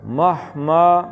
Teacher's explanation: سینے سے نکالنا ہے ہا کو